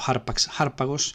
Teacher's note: El modelo que sigue es el sustantivo aix, aigos, que ya vimos en la tercera declinación. El tema es en gamma, es decir, en oclusiva velar sonora